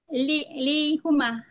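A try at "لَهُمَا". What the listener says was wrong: Kalau li dengan yang mutakalim baru. Li ana. Li akhun wa ahidun. Selainnya fathah lamnya.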